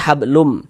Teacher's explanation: Kemudian cara membaca idgham ghunah bunyi nun sukun atau bunyi tanwinnya dimasukkan ke dalam huruf idgham ghunahnya kemudian dia dighunahkan, didengungkan. Sehingga ini kita baca lum jangan dibaca lun hablun mim gitu jangan. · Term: idgham bighunah